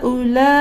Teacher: اور یہاں پر بھی الف مدہ میں ہے بڑی مد کی لکیر، الف مدہ کے بعد حمزہ بھی اسی کلمے میں، یعنی یہاں پر بھی ہا میں بھی آپ کو 4 سیکنڈ کھینچنا ہے اور لا میں بھی 4 سیکنڈ کھینچنا ہے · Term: مد متصل